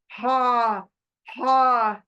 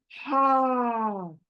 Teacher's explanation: और ये है थर्ड पार्ट हलक की लेटर, यानी सीने के तरफ जो हलक का हिस्सा है वहां से अदा होगा लेटर हा। हा हलक में कहीं भी रुकेगा नहीं, सीने से निकलकर फौरन हलक से निकलकर बाहर निकलेगा, कहीं टच करना नहीं है इसको।